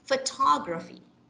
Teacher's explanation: The second syllable is stressed. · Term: stressed syllables